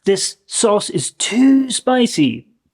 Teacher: I would say that this version of to is often stretched a little bit because you want to be very clear that there is an excess of something negative.